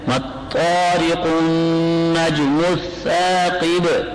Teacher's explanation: وقف بالاسکان ہوگا لیکن با میں قلقل آ جائے گا کیونکہ سکون عارضی آ گیا · حروف قمری میں سے کوئی نہیں آیا تو لہذا لام نہیں پڑھا جا رہا، لام کا ادغام ہوا ہے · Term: ادغام شمسی